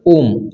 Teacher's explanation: पुल स्वर जिसे हम क्या है त्रि मात्रिक भी कहते हैं जिनके उच्चारण में लघु और दीर्घ से ज्यादा समय लगे उसे क्या कहते हैं हम उसे फलत स्वर कहते हैं